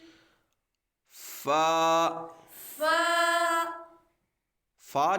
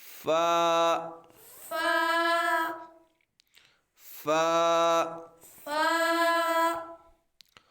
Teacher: جب ہم فا کو پڑھیں گے تو یہ اوپر کے دانتوں کے کنارے اور نچلے ہونٹ کے تر حصے سے ادا ہوگا ، یعنی اوپر کا جو دانتوں کا کنارہ ہے، نیچے والے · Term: حروف شفویہ